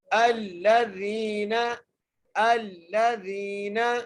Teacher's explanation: اس لیے ملانا ہے کیونکہ لام کے اوپر تشدید ہے، الذین، زال کو یا سے ملانا ہے اور ایک الف کی مقدار کھینچ کے پڑھنا ہے